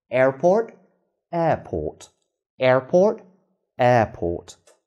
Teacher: examples of the stopped t remember when it's at the end of the word and not followed by any vowel